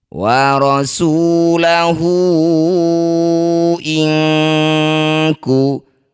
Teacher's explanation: Dipanjangkan hu lima harakat atau lima ketukan.